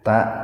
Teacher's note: ta itu dihentakkan, jadi tidak dibaca panjang tapi dihentakkan karena hamzah, ada hamzah jatuh di tengah-tengah kata, disebutnya hamzah gelatoh itu, hamzah yang dibacanya dihentakkan.